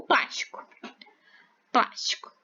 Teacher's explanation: a sílaba tônica é a sílaba mais forte certo então ela é a antepenúltima sílaba da palavra essa sílaba é a última essa é a penúltima ea antepenúltima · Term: proparoxítona